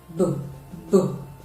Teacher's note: It causes a lot of vibration in the vocal cord. It is a voiced bilabial plosive sound. It is bilabial because when you produce the sound, the two lips will come together.